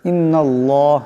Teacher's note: ইন্নাল্লাহ এখানে আল্লাহ লামের ডাইনে জবর আসছে, আল্লাহ লামকে মোটা আওয়াজে পড়তে হবে।